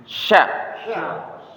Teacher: Tengah lidah bertemu dengan langit-langit atas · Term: syin